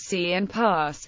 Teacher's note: It has a characteristic high-pitched, highly perceptible hissing sound. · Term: voiceless alveolar sibilant